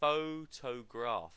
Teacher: And so the stress falls back to the first syllable.